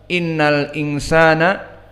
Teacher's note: maka huruf hamzah huruf muraqqaqah, inna dan nun kadalik muraqqaqah, namun di sini nunnya gunnah, idan wajabal gunnah, dan nun musyaddadah wajabal gunnah, makhrajuhu dari khaysum, makhrajnya dari hidung.